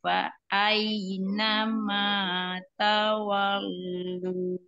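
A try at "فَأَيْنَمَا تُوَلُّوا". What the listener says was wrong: Tua, bukan tawa, tualu. Tadi Umu bacanya ta, harusnya tuh tua, tualu.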